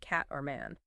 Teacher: vowels are often quite strong, sometimes perceived as a bit nasal compared to RP sometimes. Think the A sound in cat or man.